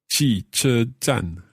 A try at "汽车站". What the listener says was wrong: You get the tones all right, but the 车, the CHE, so when you have H, you have to roll back your tongue in the mouth and then push your lips forward a bit. You can hear the difference with H and without H, okay?